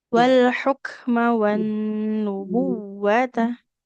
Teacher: Nafasnya sama huruf h-nya. Di tengah tenggorokan.